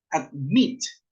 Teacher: La acentuación está en la última sílaba. Admit. No dice admit, sino que dice admit.